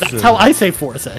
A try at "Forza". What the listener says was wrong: Wrong though. Forza. There's a T in there. There's a T. It's really not.